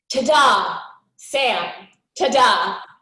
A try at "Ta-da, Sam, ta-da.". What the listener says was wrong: It feels a little bit like a question. So I want you to really just land it.